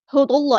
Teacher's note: اللہ کا جو لام ہے یہاں پہ موٹا ادا کریں گے، اس میں جلالت تفخیم ہو رہا ہے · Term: لام موٹا